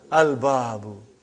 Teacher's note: Moon letter. You did pronounce lam.